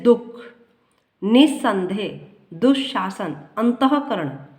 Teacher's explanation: विसर्ग वाले अक्षर पर बलाघात होता है